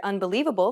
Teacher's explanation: do you notice how the li is accentuated that's because it's stressed stressed syllables are pronounced longer and louder than unstressed syllables unstressed